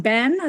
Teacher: part of that California vowel shift where you're actually lowering your tongue